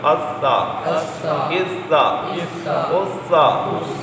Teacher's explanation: 3 نقطوں والا سا یہ بھی نرمی سے پڑھنا ہے سیٹی پیدا نہ ہو